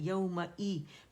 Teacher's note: फिर मीम फतह मा है तो ज़ाहिर जबड़ा खुलेगा, ई हमज़ा की आवाज़ है तो हमने ई साउंड देने, ए करके नहीं पढ़ना है